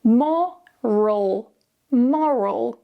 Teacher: So again, because we're moving the stress, the vowels are going to change just a little bit. With the first word, we start with o, more, and then we go into a schwa and very relaxed.